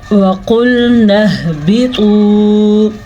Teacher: قاف کو ہم موٹا پڑھیں گے، ہا کے مخرج کا خاص خیال رکھیں گے اور طوا کو بھی ہم پر پڑھیں گے